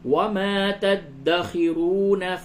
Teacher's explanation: را کو پر کر کے پڑھیں